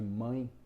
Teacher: ela tem um som de i fraco junto à outra vogal